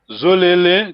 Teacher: There's no nasal here. There's no N.